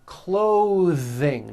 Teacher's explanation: at these voiced th sounds in the middle of words clothing notice how my tongue comes out in the middle of the word and the th sound is pushed out